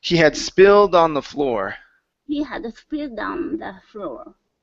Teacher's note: So, what you're going to do is connect the D to the word on. So, you're going to say dawn.